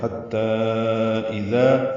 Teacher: ہا وسط حلق سے نکالیں گے، تا سے ملائیں گے، تا کو لمبا کریں گے، 4 حرکات چھوٹی مد